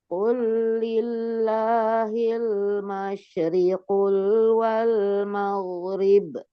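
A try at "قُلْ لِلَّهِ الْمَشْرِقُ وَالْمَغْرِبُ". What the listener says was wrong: Nggak boleh masyriqul. Nggak ada lamnya ya. Setelah huruf qaf. Jangan jangan menambahkan huruf yang tidak ada. Hati-hati. Qul lillahil masyriqu wal maghrib. Kemudian hati-hati, jangan menambah huruf yang tidak ada.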